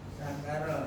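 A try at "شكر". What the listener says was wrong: Sakar pakai syin Pak.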